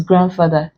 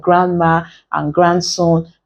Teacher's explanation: D is pronounced in grandfather unlike Grandma and Grandson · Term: consonant D